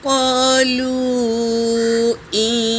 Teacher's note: اس پر مد ہے مد منفصل۔ یہاں پر تین سے چار الف کی مقدار کھینچیں گے۔